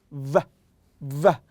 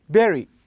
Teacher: And when I'm talking about the v sound, you should use your upper teeth, okay, with the lower lip, okay, v, v.